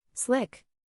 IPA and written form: slɪk (Slick)